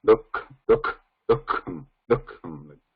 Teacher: The pronunciation is not dukham. There is a visarga in between, and that visarga has to be, because it is a single word, has to be pronounced like half visarga.